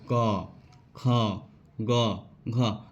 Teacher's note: तो क वर्ग का उच्चारण कहाँ से होता है, हमारा कंठ से उसका उच्चारण होता है।